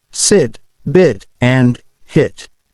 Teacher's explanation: The sound is made with the tongue slightly raised, but not too high in the mouth. Your mouth should stay relaxed. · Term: short I sound